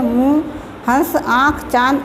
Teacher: इसमें स्वरों का उच्चारण नाक और मुंह दोनों से किया जाता है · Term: अनुनासिक